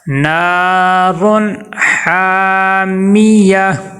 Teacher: تنوین کے آگے حا حروف حلقی میں سے آ گیا ہے، تو حروف حلقی کیا کرتا ہے، تنوین کو ناک میں غنہ کرنے سے روک دیتا ہے